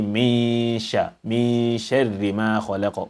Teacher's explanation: The implication is that you have to merge the noon into this, or you have to hide the noon into the shin, and you will have to also apply ghunna to it